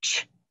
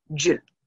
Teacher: the affricate ch, and then j for the voiced j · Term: affricates